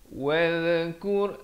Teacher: zal di hujung lidah. Wadhkur fil kitabi Musa.